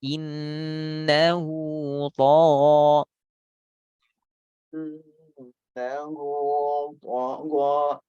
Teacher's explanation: Tebal tagha, tebalnya ro sama seperti to.